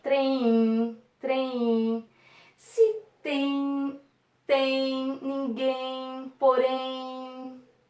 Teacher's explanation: no final das palavras eles têm um som de diferente porque o m aqui ele tem um som de u